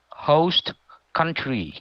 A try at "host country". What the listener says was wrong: Very good. Very precise. Very, very good English.